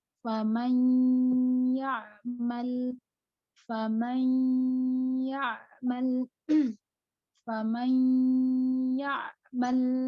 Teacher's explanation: Jadi nun sukun dimasukkan kepada huruf ya gitu. Faman ya'mal, bukan faman ya, tapi faman ya'mal. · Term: idgham bi gunnah